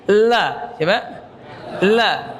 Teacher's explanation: huruf lam makhrajnya ya ujung lidah beserta dua sisinya dengan langit-langit. Nah, berserta dengan dua sisinya.